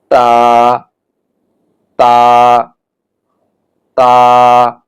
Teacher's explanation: জিহ্বার আগা সামনের উপরের দুই দাঁতের গোড়ার সঙ্গে লাগাতে হবে, অর্থাৎ জিহ্বার আগাটা উপরের দাঁতের গোড়ার সঙ্গে লাগাতে হবে।